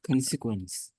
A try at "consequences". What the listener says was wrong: Good. Yeah, it has an S at the end. Must pronounce the S.